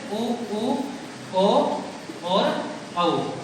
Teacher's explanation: वे स्वर जिनको बोलने में जो अपने होठ की आकृति है वो गोल हो जाए वो होती है वृत्ताकार। इसमें होते हैं उ और ओ, औ। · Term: वृत्ताकार स्वर